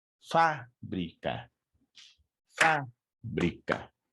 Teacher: es una palabra trisilábica en donde la sílaba tónica se encuentra ubicada en la antepenúltima sílaba